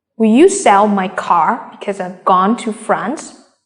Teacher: the keywords are sell car gone front you will stress on these keywords when you stress try to say it louder longer and in a higher pitch